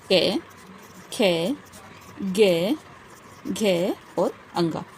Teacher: पहला प्रकार है कंठ से उच्चारित। तो कंठ से उच्चारित वर्णों के अंतर्गत आते हैं हमारे क वर्ग वाले व्यंजन, जैसे कि क, ख, ग, घ और अंगा।